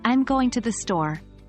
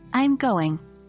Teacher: Notice how the contraction, I'm, connects smoothly with the word, going. We don't say, I'm going, with a pause, but rather, I'm going, almost as if it's one word. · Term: linking contractions